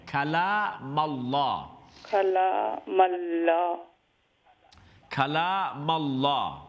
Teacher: खला लाम empty mouth है ना, सिर्फ अल्लाह का नाम फुल माउथ है